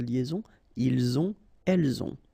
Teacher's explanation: final T not pronounced, and then we make the liaison